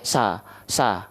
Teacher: lafal kan vokal a saja dulu lalu buka mulutnya tanpa senyum karena tebal sa nah gini ya sa sa Oke sudah sekarang angkat bagian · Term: Shad